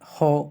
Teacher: ধ্বনিদ্বারের ২টি পাল্লা থেকে হ উচ্চারিত হয় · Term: কণ্ঠনালীয় ধ্বনি